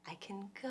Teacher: the musical pattern that our ears detect is quick and light and one big stress